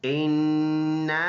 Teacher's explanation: ये नून मुशद्दद है और इसमें एक अलिफ के बराबर इसमें गुन्ना होगा। ये अलिफ है, इसके ऊपर ये छोटा मद है, तो एक अलिफ का अंदाज़ा 1 से 2 सेकंड इसको लंबा करेंगे।